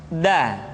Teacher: da diucapkan dengan menyentuhkan ujung lidah kita dengan bagian gusi-gusi dua ujung dua gigi seri bagian atas Da nah kesalahan yang sering dilakukan adalah menyentuhkan ujung lidah dengan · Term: huruf da